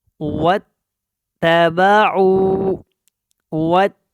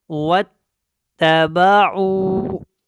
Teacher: تا کو واو کے ساتھ ملانا ہے کیونکہ شد ہے اور اس کو پختگی کے ساتھ ادا کرنا ہے